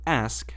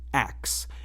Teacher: some people pronounce the word ask as axe, inverting the k and s sounds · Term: Metathesis